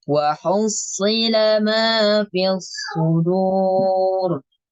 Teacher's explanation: Kalau wa hussila itu ke huruf sin, lebih ke huruf sin, bukan huruf sod. Karena huruf sod itu kita baca tebal, tidak dibaca tipis walaupun harokatnya kasroh.